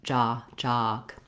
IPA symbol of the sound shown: ɑ